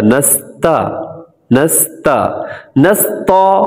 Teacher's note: تا کو باریک پڑھا جاتا ہے، کبھی بھی موٹا نہیں کیا جاتا ہے۔